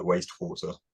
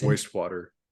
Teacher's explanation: Like I realized that I was actually devoicing that W.